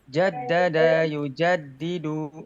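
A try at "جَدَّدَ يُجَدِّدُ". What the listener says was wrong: Oke, tidak dipanjangkan ya, bukan jaddada yujaddidu, enggak. Tidak dipanjangkan. Jaddada yujaddidu.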